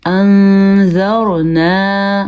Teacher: نون زبر الف نا، انذرنا. نون ساکن ہونے کی وجہ سے یہاں پہ ذال ہے تو اخفا ہوگا